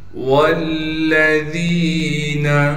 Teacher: لام پر تشدید ہونے کی وجہ سے تھوڑا ٹھہراؤ کر رکھیں گے ، لام کو بغیر کھینچے پڑھیں گے، ذال کے بعد یا